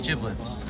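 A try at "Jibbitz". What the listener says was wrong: not giblets. Where's the L? Where's the L?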